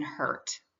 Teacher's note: R controlled vowels or sometimes called the bossy R vowels occur when a vowel is followed by the letter R which changes the vowel sound. The R influences the vowel so that it is neither pronounced as a long nor a short vowel. Example the ur makes the same sound as the eer sound as in hurt.